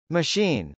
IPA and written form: məʃˈin (machine)